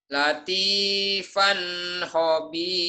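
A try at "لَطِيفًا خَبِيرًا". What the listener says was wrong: Jangan ditahan, idhar, jangan ditahan. Latifan khobiran.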